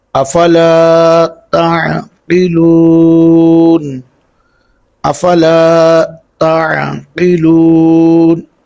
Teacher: یہ جو قاف ہے اس کو دو نقطے والا قاف، اس کو پر پڑھیں گے، اور تا کے ساتھ عین ہے، اس کو عین کو ہم عین کی آواز ہی نکالیں گے.